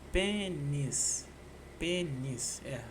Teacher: São duas sílabas. E a sílaba tônica tá no pen. Pênis. Pênis não tem ditongo.